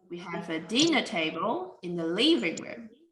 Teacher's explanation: we need to stress the first nouns